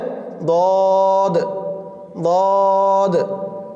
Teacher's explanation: দোয়াদের মাখরাজ, জিহ্বার গোড়ার কিনারা, জিহ্বার গোড়ার কিনারা উপরের মাড়ির দাঁতের গোড়ার সঙ্গে লাগিয়ে উচ্চারিত হয়